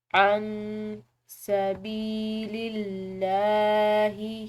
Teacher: نون ساکن ہے، اس کے بعد سین حروف اخفا میں سے ہے تو اس کو ہم نے مخفی کر کے پڑھنا ہے